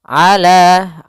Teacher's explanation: jangan sampai ala dengan hamzah tapi dengan ain